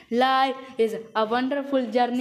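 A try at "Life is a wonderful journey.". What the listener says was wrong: सांस क्यों लेता है बंदा बीच में? तो बीच में रोको बात। इज अ वंडरफुल जर्नी। इस तरीके से बोलना है। लाइफ इज अ वंडरफुल जर्नी। खींचना है। लाइफ इज अ वंडरफुल, लगातार बोलना इधर।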